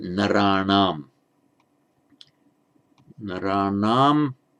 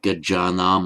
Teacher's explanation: It's the normal anam ending for the genitive plural of the Buddhas, buddhanam, but the n here, like anywhere else, almost anywhere else, follows the rule that with the preceding r, it becomes a retroflex n, the subdotted.